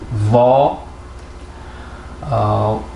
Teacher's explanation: V. Keyingisi u unlisiga o unlisini qo'shish orqali vo diftongi kelib chiqyapti